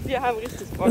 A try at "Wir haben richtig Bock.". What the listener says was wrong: Falsche Stimmlage.